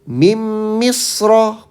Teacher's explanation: Bukan min misro tapi mim. Mim rada dengung dikit.